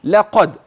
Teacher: اللام ترقق القاف الدال مقلقله